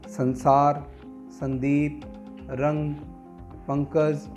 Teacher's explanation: इनका उच्चारण करते समय वायु ध्वनि केवल नाक से निकलती है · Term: अनुस्वार